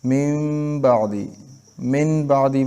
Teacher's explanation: دغه نون ساکن او تنوین به میم سره بدلو او غنی او اخفاء سره به وایو لکه من بعدی با نشي ویل کېږي. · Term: اقلاب